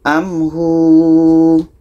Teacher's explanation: Hu ini dibaca panjang karena ada waw mati sebelumnya baris depan.